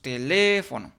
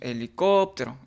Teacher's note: son palabras cuya sílaba tónica recae en la antepenúltima sílaba y estas siempre se acentúan. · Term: palabras esdújulas